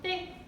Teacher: 비읍하고 시옷하고 디귿이에요. 디귿을 된소리로 해서 땡, 요렇게 발음을 하시면 돼요